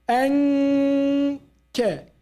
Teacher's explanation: You don't go by your tongue to the makhraj. Makhraj is at the back of the tongue. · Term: ikhfa